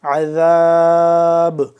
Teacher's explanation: عین کو حلق کے درمیانی حصے سے ذرا کھینچ کے نکالیں گے، ذال کو نرمی سے زبان کی نوک کو 2 دانتوں کے درمیان ذرا باہر کی جانب نکال کر ذا ادا ہوگا نرمی سے. عذاب با ساکن ہے تو یہاں پہ ہم قلقلہ کریں گے آخر پہ، عذاب. اگر اس کو ساتھ ملا کر پڑھیں گے اور وقف اگر نہیں کرتے تو پھر عذاب ہی پڑھیں گے، ادروائز جب وقف کریں گے تو اس کو ہم قلقلہ کریں گے با کو، عذاب.